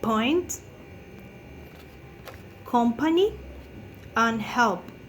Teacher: So is the place of articulation is bilabial. You have contact with the upper and lower lips. So the manner of articulation is stop. You have a complete obstruction of the outgoing airstream.